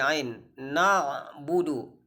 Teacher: Huruf ain itu berada di pertengahan tenggorokan.